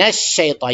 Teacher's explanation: یہ بڑا شین ہے، شین یعنی اس میں شیٹی نکلنی چاہیے